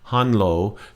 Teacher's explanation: flat tone and then low Rising tone